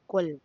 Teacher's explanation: Huruf kaf harus dipantulkan dengan jelas ketika dibaca. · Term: qalqalah